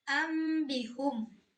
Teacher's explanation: nun mati ini berubah menjadi mim dan dibaca dengung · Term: iqlab